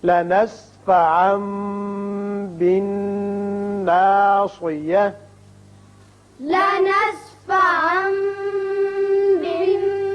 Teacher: صاد کو تھوڑا سا پر کر کے گلائی کے ساتھ ادا کیجئے تاکہ سین معلوم نہ ہو